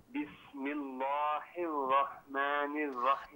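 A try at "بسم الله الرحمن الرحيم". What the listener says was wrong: اچھا آپ نے جو پڑھا نا بسم اللہ، لام کو، لفظ اللہ کی لام کو باریک پڑھیے.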